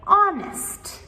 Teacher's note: with honest, it begins with the o sound, not the h.